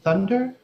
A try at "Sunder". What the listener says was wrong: No, Sunder with an S, my dear boy. Sunder. Sunder.